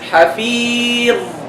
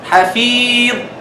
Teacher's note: Don't cut it. Because it's rikhu. Let it flow a little bit